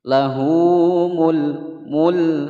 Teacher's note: Hukum bacaan mad silah qasirah. Lahu mul lam berharokat sukun, dibaca jelas, jangan dipantulkan.